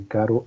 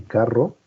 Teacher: La única diferencia, el único rasgo que cambia es si es vibrante simple o vibrante múltiple